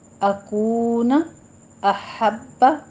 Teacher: ہا وسط حلق سے ادا کرنا ہے باریک اور با پہ تشدید ہے